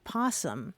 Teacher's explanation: it's easy to lose that O because that first syllable is unstressed. So that O defaults to a schwa or an O, and it just falls away, and it just turns into possum.